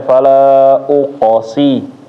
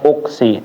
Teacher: huruf qalqalah itu di huruf qof ketika sukun dia dipantul juga